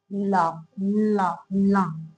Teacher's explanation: ला पार्श्विक व्यंजन है। पार्श्विक व्यंजन मतलब दोनों साइड से हवा निकले बोलते टाइम